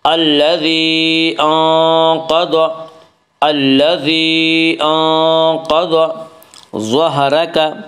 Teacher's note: انقض میں اخفاء حقیقی ہوگا